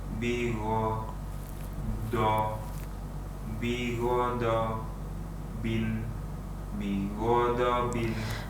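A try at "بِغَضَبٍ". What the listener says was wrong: Ketika kita melafadzkan huruf dot, sebenarnya ada kelihatan seperti agak kesusahan gitu. Ya, agak kesusahan. Ini menandakan bahwa dotnya itu memang benar-benar ditekan. Tadi untuk antum lafadz yang pertama itu sudah benar.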